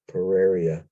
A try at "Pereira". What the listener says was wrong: Pereira. It's only one eye.